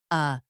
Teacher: Let us start with the most common reduced sound, the schwa. It is the neutral relaxed vowel.